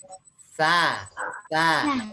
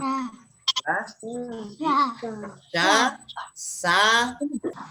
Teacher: Nah, kalau hanya huruf sa ini, ujung lidah ketemu gigi seri bagian atas. Nah, ujung lidah ketemu ujung gigi seri atas